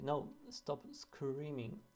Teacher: So there is an insertion of a schwa to make the word more contrastive with the confused word. It becomes more understandable what you're saying.